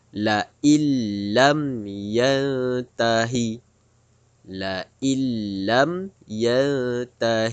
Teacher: kita kemasukan bunyi Nun Sakinah ke dalam huruf lam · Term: idgham bilagunnah